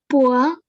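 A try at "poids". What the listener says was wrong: Poa. Very good.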